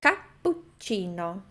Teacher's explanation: Fazendo a pausa um pouco antes do pu e um pouco antes do ti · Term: dópia